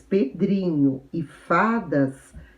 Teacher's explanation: As palavras pedrinho e fadas são palavras paroxítonas, porque a sílaba tônica é a penúltima